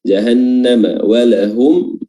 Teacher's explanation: Nun tasdid lagi, ya, di durasnya ditahan karena mengandung gunnah. Jahannam walahum, di sini juga ada mim mim sukun yang ketiga yang hukumnya juga izhar syafawi bertemu juga dengan huruf ain.